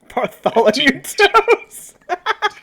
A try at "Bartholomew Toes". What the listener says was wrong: TOS, not toes on your feet. TOWS. Yeah, like the verb toes. Not toes on your feet.